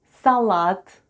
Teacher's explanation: Salad with the stress on the last syllable.